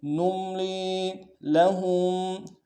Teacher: میم ساکن میں غنہ کریں گے، لام کو یا مدہ کے ساتھ ملانا ہے، ایک الف دار میں کھینچیں گے